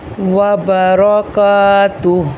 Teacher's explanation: جب ہا پر آ کر رکتے ہیں، ہا کو ساکن کرتے ہیں، تو ہا کے اوپر جو حرکت ہے اس کو نہیں پڑھتے